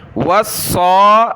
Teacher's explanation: صاد کے اوپر کھڑا زبر ہے تو صاد کو اوپر کھینچیں گے